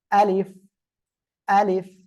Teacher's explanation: এই শেষে যে ফ বা এটাকে আপনারা উচ্চারণ করবেন নিচের ঠোঁটের পেট উপরের দুই দাঁতের আগার সঙ্গে লাগিয়ে।